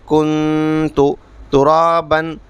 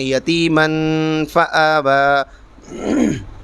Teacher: نون کی آواز کو ناک میں چھپا کر پڑھیں گے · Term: اخفا